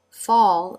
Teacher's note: the dark L Note the shape of the lips and there the tongue goes up to the roof of the mouth to finish the l sound